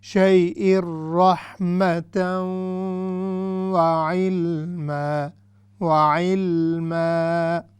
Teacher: ادغام مع الغنہ، یعنی ایسا ادغام جس میں غنہ بھی کیا جاتا ہے